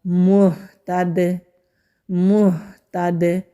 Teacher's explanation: دال کو ہم ساکن کریں گے تو دال پر پھر قلقلہ ہوگا